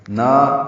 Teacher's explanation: یہ الف مدہ ہے، 2 حرکات لمبا ہے